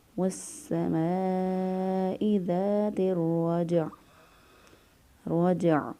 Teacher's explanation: جیم پر قلقلہ کیا کیونکہ جیم حروف قلقلہ میں سے ہے